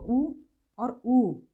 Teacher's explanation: छोटा ऊ और बड़ा ऊ, तो इनका उच्चारण होठों की सहायता से होता है। आप देख रहे होंगे किस तरह से होठों की शेप बदलती है इसमें।